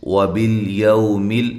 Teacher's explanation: لام کو ہلانا نہیں ہے، یو واولین ہے